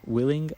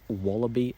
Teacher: I'll also use it I'll also villarize it before back vowels willing I'll use a light L but then wallaby I'll velarize it